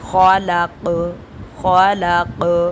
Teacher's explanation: خا کو حلق سے نکالیں گے اور آخر پہ ہم قلقلہ کریں گے